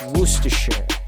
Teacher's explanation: until you get to that shire sound at the end and you replace the i sound with a schwa